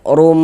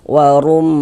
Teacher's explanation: Maka kita gunahkan sehingga di bagian rum, di bagian situnya tuh suaranya itu kita tahan ee kita ghunahkan, kita dengungkan kira-kira sepanjang dua harakat. Warum man dibaca panjang ini. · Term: gunah musyaddadah